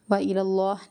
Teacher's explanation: لفظ اللہ کلام یہاں پر موٹا پڑھا جائے گا